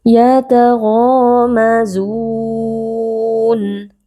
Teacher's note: Nah, di sini ada mad tabi'i karena ada alif yang sebelumnya berharokat fathah, dibaca panjang 2 harokat. Huruf ghain juga huruf tafkhim, huruf tebal, jadi dibaca dengan mengangkat pangkal lidah.